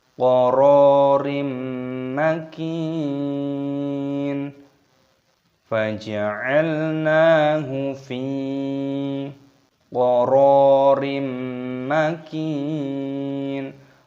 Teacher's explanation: Roknya dibaca panjang, ada tanda alifnya dipanjangkan 2 ketukan matobi'i.